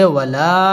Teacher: মধ্যে মুনফাসিল তিন আলিফ টান দিয়ে পড়তে হবে · ওয়াও ঠোঁট গোল করে উচ্চারণ করতে হবে